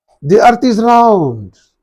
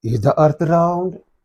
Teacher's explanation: The earth is round. Falling tone. Is the earth round? Rising intonation.